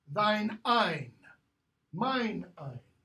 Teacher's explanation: In the Renaissance, in Middle English period, when the following word began with a vowel, you used the pronoun form that ended with an N sound